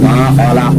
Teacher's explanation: Ma khalaq, ma dibacanya harus panjang karena termasuk itu mad tabi'i